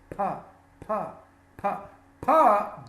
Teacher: we have the letter P the sound of P is up doesn't produce vibration in the throat P is an unvoiced sound